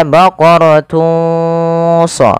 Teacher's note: samarkan suara tanwinnya kepada huruf Shad maka baqaratu SH bukan lagi baqaratun sofra awalnya baqaratun ketemu Shad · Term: Ikhfa